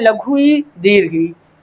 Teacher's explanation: इसका उच्चारण स्थान तालु है, इन्हीं को तालव्य कहा जाता है, तालु से उच्चारित होने वाले